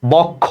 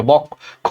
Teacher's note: যেমন দেখো বক্ষ, এই যে লেখো যুক্ত, যুক্ত খ, তাহলে যুক্ত ব্যঞ্জনের সাথে একটা অ আছে, বক্ষ শব্দের শেষে, এটা ওর মতো উচ্চারণ হবে, যে বক্ষ, এই যে খ ওকার।